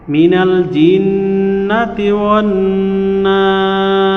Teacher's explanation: এইখানে নুনের উপরে তাজদিদ থাকার কারণে ওয়াজিব গুন্না হবে, এবং নাস শব্দের মধ্যেও নুনে তাজদিদ আছে, ওয়াজিব গুন্না প্লাস হলো মাদে আরজি হবে, 3 আলিফ টেনে পড়তে হবে।